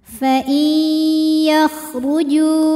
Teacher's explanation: Fa'i, ada idgham bi gunnah karena nun sukun menghadapi ya, maka nun masuk ke ya disertai bunyi dengung. Fa'i yakhruju, huruf ra dibunyikan secara tafkhim karena berbaris dhammah, maka bacanya tebal.